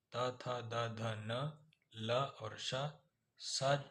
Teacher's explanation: दंतव्य व्यंजन दांतों के प्रयोग से अर्थात दांत और जीभ के स्पर्श से बोले जाने वाले वर्ण दंत्य कहलाते हैं। इसमें त वर्ग त, थ, द, ध, न, ल और श स ये वाला जो होता है वो दंती स होता है।